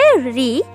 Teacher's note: রি, যার উচ্চারণ স্থানটি মূর্ধা